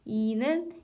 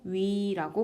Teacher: 이는 입술이 평평하지만 그 상태에서 입술을 동그랗게 모으면 위라고 발음을 할 수 있죠